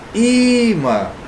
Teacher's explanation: Então vai ficar imã, a mais forte é o i. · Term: paroxítona